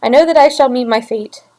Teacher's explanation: this and this is because this is in iambic tetrameter so we have unstressed stressed unstressed stressed unstressed stressed unstressed stressed